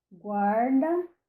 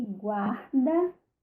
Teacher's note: No caso do R, nós temos aqui variantes, nossos alofones, também sem nenhuma motivação de ocorrência. Então, eu posso dizer guarda, uma vibrante múltipla, guarda com uma retroflexa e guarda com uma glotal. Livremente não muda o sentido da palavra.